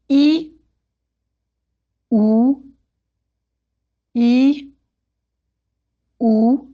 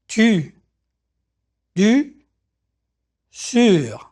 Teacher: begin with the sound E, pronounce E. Now, while keeping the inside of your mouth in the E position, round your lips like OO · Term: the French U